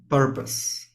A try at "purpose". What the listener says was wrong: Yes, purpose. Purpose. Mm-hmm.